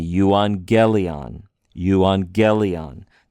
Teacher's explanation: Now, I'll remind you, we mentioned this in a previous video, when you have two gammas together, it makes an ng sound, okay? It doesn't make a g sound, it makes a ng sound. · We're trying to put a little more emphasis on the ge there.